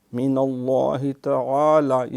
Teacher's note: اللہ کے نام سے پہلے نون ہے، اس پہ زبر ہے، زبر اور پیش ہو تو یہ موٹا ہوگا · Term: لام موٹا